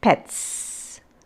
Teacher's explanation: So the morpheme S has a variation in its sound when it is in the plural form, but it is different in the plural again when it comes to another word, pets. Pets is the s is pronounced, or the phoneme is s and not z. Okay, it is not z as of the voiced sound. It is a voiceless sound. Pets, it's voiceless.